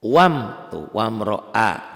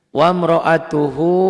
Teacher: ro-nya dibaca tebal karena baris di atas